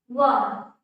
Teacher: व के उच्चारण में हमारे दांत और होठ इन दोनों का मदद लिया जा रहा है, दोनों की सहायता से व का उच्चारण कर रहे हैं। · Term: दंतोष्ठ